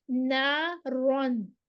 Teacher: अलिफ मद्दा आ गया, अलिफ से पहले जबर आ गई, 2 काउंट्स देंगे, खड़ी जबर जितना लंबा करेंगे। नारन रॉ, इसको फिर हम मोटा पढ़ेंगे, रॉ के ऊपर जबर होती है, मुफख्खम होती है, ये मोटी पढ़ी जाती है।